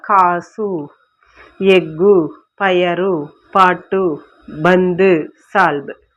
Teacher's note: இந்த மாதிரி அதோட மாத்திரை அளவு ஒன்று தான், ஆனால் கடைசியில் வரும் பொழுது தான் குறைந்து ஒலிக்குது. இந்த மாதிரி தனக்குரிய ஓசை அளவிலிருந்து குறைந்து ஒலிக்கும் உகரம் தான் குற்றிய லுகரம். · அந்த வரிசைகளில் குசுடு துபுரு அப்படிங்கிற 6 வல்லின உகரங்களும் சொல்லின் இறுதியில் வரும் பொழுது ஒரு மாத்திரைக்கு பதிலாக அரை மாத்திரை அளவு தான் ஒலிக்கும். இந்த மாதிரி அதோட மாத்திரை அளவு ஒன்று தான், ஆனால் கடைசியில் வரும் பொழுது தான் குறைந்து ஒலிக்குது.